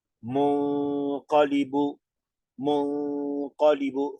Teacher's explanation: entonces nasalizamos dos tiempos sin tocar la lengua paladar